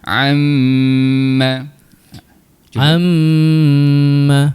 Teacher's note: Dah selesai dengung dengan kadar dua rakaat, kita sebut pula mim tu baris atas. Maka mim baris atas bunyinya ma.